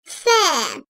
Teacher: Üst ön dişlerin alt dudağın iç kısmına değmesiyle çıkarılır, ince sesli ve yumuşak bir harftir.